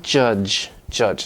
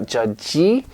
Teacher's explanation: we don't create that extra consonant at the end